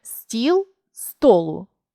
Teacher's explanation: чергуються голосні і з о